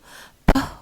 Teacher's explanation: p, which is a bilabial stop or plosive voiceless consonant